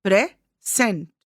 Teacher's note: if the word present is used as a noun, the stress is on the first syllable